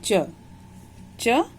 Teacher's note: च का उच्चारण स्थान है तालु और नाम है तालव्य।